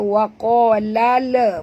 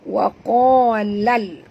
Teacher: Bunyikan lam yang mati dengan jelas tanpa lantunan. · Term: alif lam qamariyah